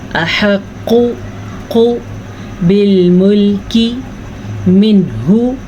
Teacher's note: قاف کو پر پڑھیں, جھٹکے کے ساتھ پڑھیں اور پیش کو کھینچ کے نہیں پڑھنا